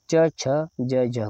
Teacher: जिन व्यंजनों का स्पर्श का समय अधिक रहता है और अंतिम ध्वनि संघर्षी हो जाती है, उसे स्पर्श संघर्षी कहते हैं। यानी स्पर्श का तो समय अधिक रहता है और ध्वनि संघर्षी हो जाती है, इसीलिए इसको हम कहते हैं स्पर्श संघर्षी ध्वनि कहते हैं।